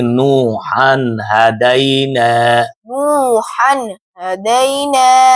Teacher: تنوین کے بعد حروف حلقی میں سے ہا آ گیا ہے، اسی لیے تنوین کی آواز کو ظاہر کر کے پڑھیں گے